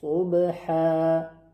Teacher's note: حرف صاد پر و لبها در وقت تلفظش غنچه میشه